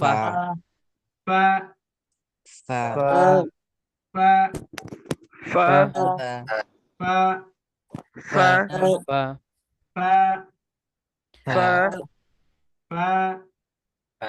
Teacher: সামনের উপরের দাঁত, নিচের ঠোঁটের পেট, বাতাস চালু